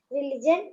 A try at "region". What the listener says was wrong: Region. It is not religion. It is region.